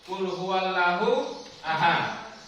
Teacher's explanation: Kata lahu di situ berarti harus dibaca tebal, karena hukum bacaan yang ada pada bacaan itu adalah hukum bacaan tafkhim.